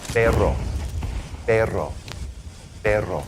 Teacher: Now let's talk about the double R. The double R is going to be what we call a trill, which is you're going to trill it like that with your tongue.